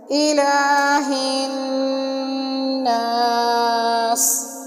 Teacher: یہاں بھی نون مشدد ہے، نون کے اوپر شد ہے، اس وجہ سے یہاں پر غنہ ہوگا اور سین کے ساتھ سین کو سختی سے پڑھا جائے گا اور سیٹی کی آواز پیدا ہوگی